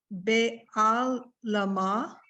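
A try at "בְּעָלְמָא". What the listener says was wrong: Why, don't give the lamed its own. Because the ayin is silent, it's gonna stay with the lamed.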